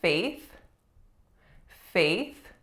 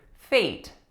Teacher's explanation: faith with a voiceless th at the end